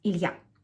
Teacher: Now, Ilya would sound even more differently in Russian than it does in English. It would have 2 syllables, not 3, and the stress will be on the last syllable. It would sound as Ilya.